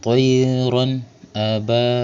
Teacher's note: ba dibaca panjang dua harakat sebab ada alif yang di harakat fathah atau baris di atas · Sebab ada tanwin fathah yang bertemu dengan huruf halq atau huruf tengkurakan yaitu huruf hamzah. Maka cara bacanya dibaca jelas. Bunyi n-nya jelas ya. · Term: mad asli, izhar halqi